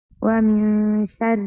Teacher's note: نون ساكنة مخفى بغنى حركتين